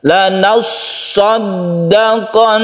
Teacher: Kemudian yang di sini yang bertasydid kita tahan. Setelah kita menekan huruf nun, maka kita tahan karena dia itu adalah gunnah musyaddada.